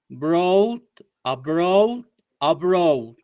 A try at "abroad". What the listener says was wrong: D. Where is the D gone? Don't kill the D. There is a D sound.